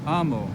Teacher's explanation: The stress falls on the penult.